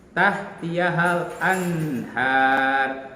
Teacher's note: ini juga nunnya dibaca jelas, yaitu karena nun mati menghadapi ha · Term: idhar